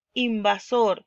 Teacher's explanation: sor por ser la más fuerte en la sílaba tónica